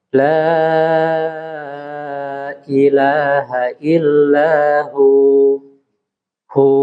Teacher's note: mat tobi'i atau mat asli ya, itu baik di tengah ataupun di akhir kalimat itu sama, kadarnya 2 harokat